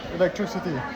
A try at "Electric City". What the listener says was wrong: Non, Electric City, pas Electricity.